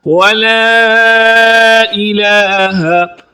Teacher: ولا الہ، الہ کی ہا کو درست نہیں پڑھا جاتا، یہ جو ہا ہے یہ حلق کے نیچے والے حصے سے ادا ہوتی ہے، اس کو ظاہر ہی نہیں کیا جاتا۔